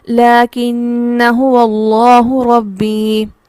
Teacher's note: ہوگی۔ ہم کس طرح سے پڑھیں گے، لَكِنَّ هُوَ اللَّهُ رَبِّي، نون کو تشدید کے ساتھ غنہ کرتے ہوئے پڑھیں گے، لیکن ہم الف کو نہیں پڑھیں گے